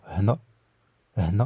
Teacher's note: Vous voyez que c'est un H légèrement expiré.